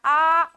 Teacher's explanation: तो बच्चा कहता है आ। बड़ा सा मुंह खोलता है ना? तो पीछे तक जाएगा तो पश्च हो जाएगा